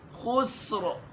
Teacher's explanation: خا پڑھتے وقت یہ آواز بھی زیادہ نہیں آئے کہ گلا بالکل اس کی خر کی آواز ہے، اس سے بھی بچنا ہے